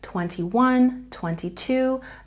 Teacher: in these numbers, 21, 22, the stress is on the last syllable